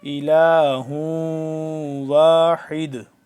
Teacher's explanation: یہاں پہ ہم وقف کریں گے تو واحد ہو جائے گا، دال جب ساکن ہو جائے گا تو یہاں پہ قلقلہ ہو جائے گا